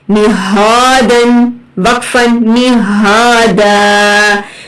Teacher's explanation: ہا اقصی حلق سے سینے میں وائبریشن فیل ہوتی ہے